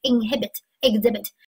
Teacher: 它读的是 exhibit，重音在第二音节